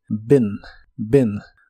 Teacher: se pronuncia con una I corta que suena ligeramente como e